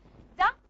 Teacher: It is a voiced alveolar stop.